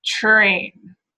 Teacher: Sounds like a cluster again because you get that ch-like quality to the first, but you can still hear the R after it.